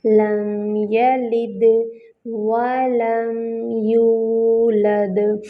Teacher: واو میں جو ہے ہونٹوں کو مکمل گول کریں گے، میم ساکن ہے، میم کو ہلانا نہیں ہے۔ یولد، واو ساکن، اس سے پہلے ضمہ، واو مد بن رہی ہے، ہونٹوں کو مکمل گول کریں گے، دال پہ جو ہے وہ کلکلا ہوگا۔